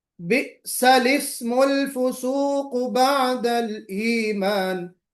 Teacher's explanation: لام سے پہلے اور لام کے بعد دونوں بھی الف نہیں پڑھی جائیں گے